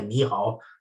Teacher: It's a kind of alerte when you sort of, like if you want to squeeze in between two people, sometimes in Chinese you say Ni Hao in a kind of falling kind of, don't know, I can't explain it, like a Ni Hao, this kind of falling tone, when you indicate that get out of my way kind of thing